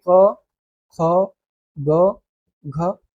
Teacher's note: जो कंठ से बोले जाते हैं। गले से जो बोले जा रहे हैं।